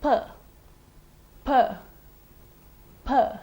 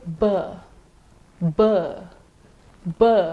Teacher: P is a voiceless, bilabial plosive. B is the voiced, bilabial plosive.